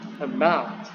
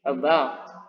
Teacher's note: suku kata setelahnya itu harus dibaca, harus ditekan, ya, dibaca ditekan. About menjadi agak tinggi. About. Nah, itu. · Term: primary stressing